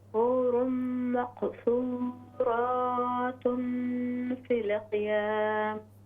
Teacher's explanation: क़ाफ में क़लक़ला कीजिए